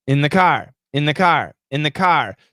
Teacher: so what happens is the th is canceled